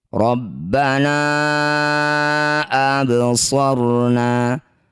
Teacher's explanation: Mad tabi'i bertemu hamzah di lain kalimat atau di lain kata ya. Ini disebut bacaan namanya mad jaiz munfasil. Na panjangkan 5 harokat.